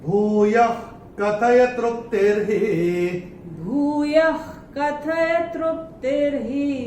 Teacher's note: तीसरे चरण में य के बाद विसर्ग के बाद का अक्षर है क, और विसर्ग के बाद जब क या ख आता है तो विसर्ग का उच्चारण होता है ख फ्रॉम द एपिग्लॉटिस। तो इसको हम विसर्ग को स्ट्राइक ऑफ करके यहां पे ख लिख के रख सकते हैं अपनी किताब में।